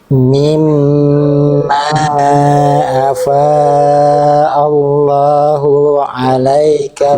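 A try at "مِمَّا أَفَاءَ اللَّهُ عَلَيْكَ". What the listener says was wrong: Nah, hu kepanjangan. Afa Allahu ala, harusnya langsung hu-nya 1 harokat aja. Ya, afa Allahu alaika, langsung.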